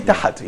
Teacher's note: when you say tahat, here you're putting a vowel, which probably called fatha.